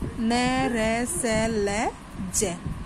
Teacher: इन व्यंजनों के उच्चारण में जीभ की नोक मसूड़ों का स्पर्श करती है। जो जीभ की नोक है आगे की वो मसूड़े हैं उनको स्पर्श करती है। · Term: वर्ष्य